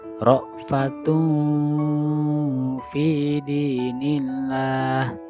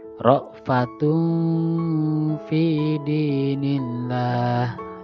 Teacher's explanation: Jadi dengungnya ditahan selama 3 harokat. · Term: ikhfa